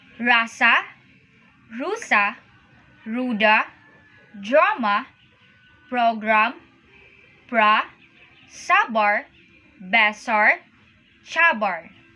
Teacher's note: R in Malay is similar to the English R, although is ruled very gently, especially when a final position. For example, an initial position, rasa, rusa, ruda, drama, program, pra, sabar, besar, chabar.